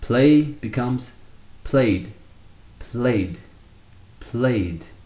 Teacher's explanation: When we add the ed, it still remains one syllable.